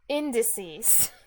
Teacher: indices has stress on the first syllable